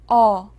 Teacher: 어는 아보다 입을 조금만 벌립니다 그리고 혀는 아보다 뒤쪽에서 중간 높이에 두고 소리를 내요